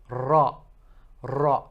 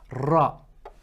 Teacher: you have to roll it a bit more so it's not like the gentle R in English it's a bit more roll ra so as if you're rowing